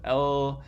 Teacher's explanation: you squeeze your tongue into the middle, and then air can flow out through the sides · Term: lateral